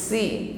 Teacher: huruf Sin ya ringan diucapkan tipis bunyinya karena lidahnya istifal tetap dibawah jadi udara yang keluar itu lurus saja sehingga bunyinya tipis